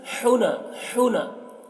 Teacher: ہا کی آواز حلق سے ایک ہوا کے ساتھ میں نکلتی ہے ، اس کی آواز جیسے حنا، حنا، یہ حنفاء ایسے بولیں